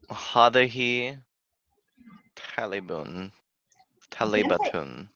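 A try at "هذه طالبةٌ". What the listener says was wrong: Talibatun. Good. Hadahi talibatun.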